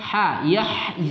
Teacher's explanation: ha huruf halqi bagian tengah